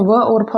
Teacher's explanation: व और फ आता है, दंत ओष्ठ होता है।